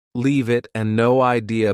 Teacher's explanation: leave it and no idea both sound like they have no spaces between the words